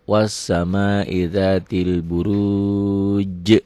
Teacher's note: Karena huruf qalqalahnya asalnya hidup dimatikan. Jadi qalqalah kubro.